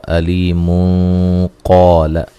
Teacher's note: ملانے کی صورت میں نون تنوین کا اخفا ہوگا موٹا